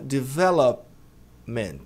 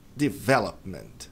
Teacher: Esse P ele é meio engolido, né? Development. Você faz que vai fazer o P, mas não faz.